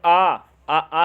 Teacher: आ में दोस्तों पूरा मुंह खुल रहा है